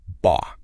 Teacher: your voice just stays steady right in the middle. No rising, no falling, kind of flat like ba. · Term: mid-level tone